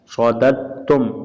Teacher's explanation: دال کو چھوڑ دیں گے، اس دال کو تا سے ملا دیں گے